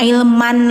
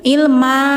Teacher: Karena berlakunya mad iwad. Tanwinnya, suara N-nya dihilangkan, digantikan ke bunyi panjang. Yang awalnya ilman, jadi ilma.